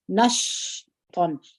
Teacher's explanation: دغه شین چې موږ تاسو وایو د هوا به مو د خولې څخه جاری وي همس باید پر وکړو